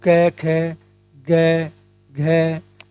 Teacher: क वर्ग जो है इसका उच्चारण स्थान कंठ होता है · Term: कंठ ध्वनियां